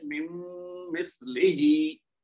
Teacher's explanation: اگر میں کہوں نا مم مثل ہی تو وہ ٹھیک ہے، لیکن بالکل صحیح نہیں ہے کیونکہ ہم نے غنہ نہیں کیا پورا. تو اس لیے غنہ بھی کرنا ہے، صرف ادغام نہیں کرنا، غنہ کے ساتھ کرنا ہے